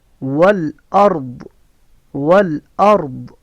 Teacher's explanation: را موٹی، را ساکن اس سے پہلے زبر ہے، اور ضاد اس کو پوری زبان کو اوپر والی دائیں طرف کی جڑوں میں لگانا ہے یا بائیں طرف کی جڑوں میں لگانا ہے، ٹھیک ہے، اوپر والے دانتوں کے.